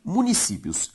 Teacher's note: A sílaba tônica de municípios, si, é a penúltima, ou seja, uma palavra paroxítona.